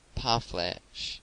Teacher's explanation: The word is commonly pronounced by Americans parfleche, with the accent on the last syllable.